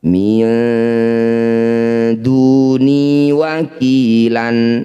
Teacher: Nun sukun bertemu dal disebut bacaan ikhfa, tepatnya yaitu ikhfa akrob. Bunyi nun dengungkan 2 harokat, ketika dengung lisan kita sudah bersiap di dal.